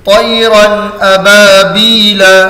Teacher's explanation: 2 زبر کی تنوین کے بعد حروف حلقی میں سے حمزہ آ رہا ہے، تو تنوین کو ظاہر کر کے بلا غنہ کے جلد پڑھیں گے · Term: اظہار